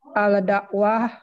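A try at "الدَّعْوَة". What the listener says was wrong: Ad, ya, alif lamnya. Ad.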